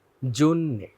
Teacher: এটার উচ্চারণটা হবে জ এর সাথে ওকার দিয়ে জন্যে